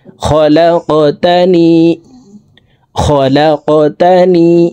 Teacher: আল্লাহুম্মা আনতা রাব্বি লা ইলাহা ইল্লা আনতা খলাকতানি, খলাক, লাম কফ জবর লাক, কফ কলকলার হরফ উপরের দিকে ধাবিত করে ধাক্কা দিয়ে উচ্চারণ করব।